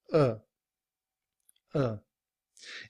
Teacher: reduced form, are is simply written as a schwah and sounds like uh